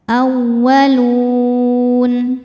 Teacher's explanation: Mad tabi'inya waw sukun yang sebelumnya diharokatil dhammah, kemudian huruf yang disukunkannya adalah huruf nun. Maka lamnya panjang, boleh 2 atau 4 atau 6 harokat, asal konsisten dalam sekali baca. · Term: mad arid li sukun